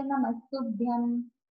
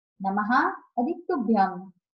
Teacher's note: नमः हे अव्यय आहे, अर्थ नमस्कार. इथे नमः अधिक तुभ्यम पुढच्या त मुळे विसर्गाचा स झाला